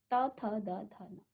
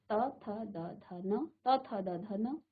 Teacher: आपके दांत की तरफ आपकी जीभ जो है स्पर्श कर रही है। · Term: त वर्ग